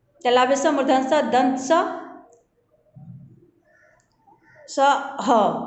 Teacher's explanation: ऊष्म व्यंजन के उच्चारण में श्वास तेजी से बाहर निकलने के कारण मुख में ऊष्मा पैदा होती है, इसलिए इन्हें हम ऊष्म व्यंजन कहते हैं।